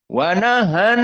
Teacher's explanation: Nahan ada nun musyaddadah. Maka idgham dan dalam keadaan dua harokat. Maka dari khaysum.